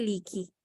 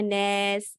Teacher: الف کا یا کی آواز میں بدل جانا، تو یہ آواز بھی اے ٹھیک نہیں ہوتی۔ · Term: امالہ